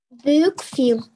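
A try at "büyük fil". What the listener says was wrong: Только если, смотрите, помним, да, какие у нас мягкие есть буквы. Это «э», «и», «ы», «ы». Они у нас мягенькие. После них, когда мы говорим согласную букву, она у нас тоже получается мягкая. Поэтому будет «филь», «гюзель», «эль».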